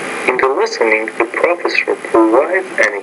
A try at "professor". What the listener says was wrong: You want to say professor, by the way, another word stress issue.